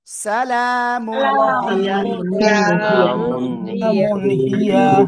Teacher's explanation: এই তানউইনের পরে এই হা আসছে। এজন্য আমরা কি করব? গুণনা করব না। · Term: স্পষ্ট করে